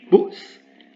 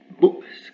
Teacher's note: Juste une fermeture et ouverture de la glotte.